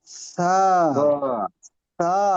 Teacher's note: জিহ্বার আগা সা সামনের উপরের দুই দাঁতের আগার সাথে লাগবে। জিহ্বার আগা সামনের উপরের দুই দাঁতের মাথার সাথে লাগলে আওয়াজটা কেমন হবে? নরম।